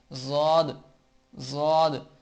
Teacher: زبان ایک ہی وقت میں دونوں طرف کی داڑوں سے زبان ٹکراتی ہے اور ضاد ادا ہوتا ہے۔ ضاد، ضاد۔ ضاد بھی قرآن پاک کا ایک موٹا حرف ہے جسے موٹا کر کے ادا کیا جاتا ہے۔